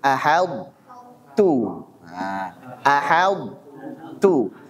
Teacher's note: Masih memiliki sifat itbaq pada huruf to-nya. Ini masih tebal dulu. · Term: idgham nakis